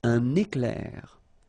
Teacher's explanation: So you can see I make this little liaison between the two.